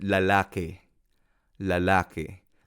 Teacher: Hay algunas palabras en Filipino que termina en i, pero cuando pronunciamos se convierte en el sonido e